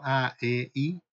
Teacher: Yo creo que la A es más abierta, la I es más junta y la E es un intermedio entre las dos